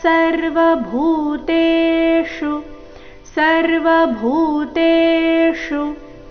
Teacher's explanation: ಶು ಇಲ್ಲಿ ಮೂರ್ಧನ್ಯ ಶಕಾರದೊಂದಿಗೆ ರಸ್ವ